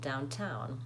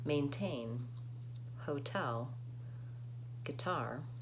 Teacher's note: there's a puff of air on the town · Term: aspirated T